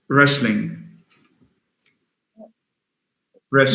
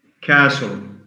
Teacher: when we have the combination of letters S, T, L, the T is silent. Castle, silent T, S-T-L.